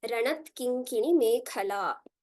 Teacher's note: So taking a look at this again, it's a very easy verse with just one Mahaprana in Mekhala towards the end